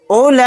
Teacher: یہاں پر لام کے اوپر کھڑا زبر ہے، کھڑا زبر کے بعد حمزہ اسی کلیمے میں ہے تو یہاں پر بھی مد متصل کا قاعدہ ہوگا۔ اس لام کو ہم کھڑا زبر کے ساتھ کھینچیں گے 4 الف کی مقدار۔ کاف کو جلدی پڑھیں گے۔